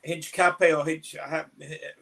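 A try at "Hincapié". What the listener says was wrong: Don't pronounce the H.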